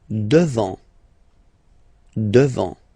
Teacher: final T not pronounced